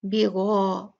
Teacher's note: غین heavy ہے، اس کے ساتھ میں الف بھی ہیوی ہوگا